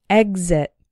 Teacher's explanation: The X is followed by a vowel sound, but the first syllable is the strong one, exit. But we still pronounce the X like gz, exit. This word appears to be an exception to the general rule.